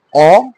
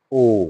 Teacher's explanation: যেটি অ সেটি হলো বিবৃত উচ্চারণ, যেটি অ সেটি হচ্ছে কি বিবৃত উচ্চারণ অ। আর যেটা ও সেটা হচ্ছে সংবৃত উচ্চারণ।